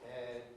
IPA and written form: hed (head)